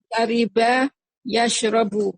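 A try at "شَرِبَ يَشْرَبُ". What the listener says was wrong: Jamil. Barakallahu fiik.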